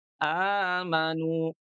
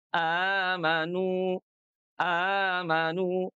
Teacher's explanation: karena hamzah yang keduanya diganti menjadi mad menjadi panjang